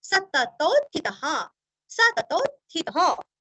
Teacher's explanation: अभी आगे स है, इसलिए विसर्ग का उच्चारण हल्का सा स, पुरुषस्, सततोत, सततोत आधात थितः, थितः, विसर्ग का ह अथवा हा। अभी इसको जोड़ के कैसे बनाए, सततोत थितः, सततोत थितः।